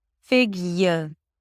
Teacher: So it's a y sound, a schwa, and an r. So basically it's a y and an r.